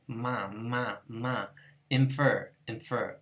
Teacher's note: This M with a tail is a labiodental nasal.